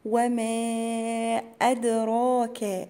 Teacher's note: الدال هنا مقلقلة عشان ساكنة والراء هتبقى مفخمة